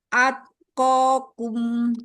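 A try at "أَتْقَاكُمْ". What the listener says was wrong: Belum terdengar hamesnya. Jangan dilepas makhrajnya, renggangkan aja. Atkokum.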